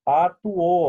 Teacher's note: O U em relação à vogal O é um hiato. Já o O em relação ao segundo U, ditongo.